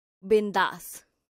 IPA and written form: ˈbɪnðaːs (bindaas)